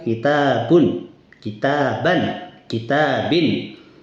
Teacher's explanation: Ada bunyi nun sukun, tapi secara tulisan tidak ada nun sukunnya. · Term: tanwin